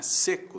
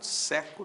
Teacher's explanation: Timbre é abertura, né? Seco tem timbre fechado. Seco tem timbre aberto.